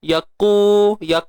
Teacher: Qaf ni dia pangkal lidah yang di belakang, yang hampir dengan nak tekak